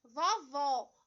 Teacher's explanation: ele o som aberto então quando a gente pronuncia palavrinha vovó observe que esse ó ele é pronunciado com maior intensidade ele traz o acento destacando a sílaba tônica e ele traz um som aberto